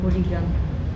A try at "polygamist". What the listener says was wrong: polygamist. IST. Polygamist.